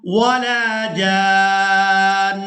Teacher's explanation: وقف کی صورت میں ہم نے نون کے اوپر جو دو پیش دیکھ رہے ہیں ان کو ادا نہیں کرنا